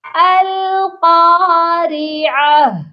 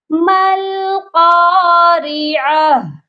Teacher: تو ہم ہا کو سائلنٹ کرتے ہیں، ہا کی آواز پر آ کر رک جاتے ہیں، اس کے اوپر دی گئی حرکات کو بھی نہیں پڑھتے، اور اس کے اوپر اگر 2 ڈوٹ ہیں اس کو بھی چھوڑ دیتے ہیں اور وقف کریں گے ہا پر۔ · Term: گول والی تا